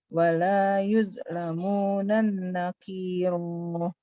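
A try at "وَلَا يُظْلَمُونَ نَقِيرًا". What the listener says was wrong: Di situ nggak ada tasdidnya. yudlamuna nakiro.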